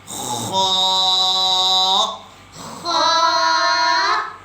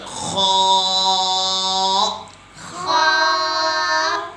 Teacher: استعلا کا مطلب ہے موٹے حروف، جو 7 موٹے حروف ہیں اس میں بھی یہ خا آتا ہے۔ اس کو موٹا کر کے پڑھیں گے، خا، منہ کو کھول کر، خا، ماشاءاللہ۔